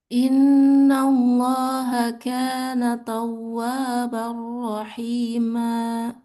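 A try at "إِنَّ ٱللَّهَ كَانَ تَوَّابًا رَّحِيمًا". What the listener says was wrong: Jangan ada hamzah di ujungnya. Rahima.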